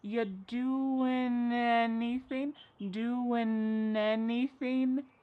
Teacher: We sometimes drop the a and we're going to push those two together because there's two n sounds by side. · We link together doing because we're going to drop the g. It ends with the sound n the n sound.